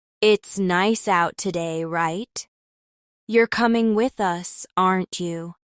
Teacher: they are usually spoken quickly and with rising intonation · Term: question tags